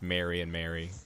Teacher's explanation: it sounds like I say Mary the name and Mary the act the same way